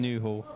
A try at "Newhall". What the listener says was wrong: It's Newhall, not Newhall. Yes, you don't pronounce the H. No, it's the opposite of posh.